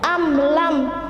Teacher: jadi mim sukun bertemu dengan lam membacanya harus jelas tidak ada menanggungnya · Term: izhar syafawi